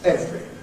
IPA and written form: ˈevri (every)